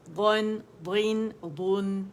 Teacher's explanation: یہ موٹا دال نہیں ہے, ضاد, ضاد. زبان کی جڑ بھی اٹھے گی, موٹے کنارے سائڈ اوپر لگیں گے